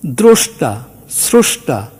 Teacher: রফলাযুক্ত বর্ণ, অকারান্ত বর্ণ, এটা ওকারান্ত উচ্চারিত হচ্ছে। সুতরাং এই যে রফলাযুক্ত বর্ণ থাকলে আমরা সাধারণত এটাকে ওকারান্ত উচ্চারণ করব, কিন্তু করব না, ব্যতিক্রম আছে।